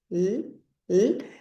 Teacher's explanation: lo que pasa con mi lengua es que se eleva verdad y va hacia atrás a chocar detrás de los dientes